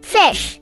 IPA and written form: fɪʃ (Fish)